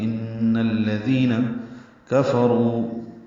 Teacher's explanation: کاف باریک ہے، را پر ہے، رو غو مد ہے. · ان میں غنہ ہوتا ہے اور الذین کا حمزہ عارضی ہوتا ہے، ملا دیں گے